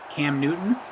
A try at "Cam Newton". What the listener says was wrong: No. they dropped the T altogether. They insist that the T they insist that the T is not part of the pronunciation of the name. Cam Newton. Newton, like Newton.